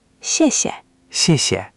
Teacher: The first 谢 takes a falling 4th tone, sharp, like you're gently scolding someone. The second 谢 is light and neutral, almost swallowed.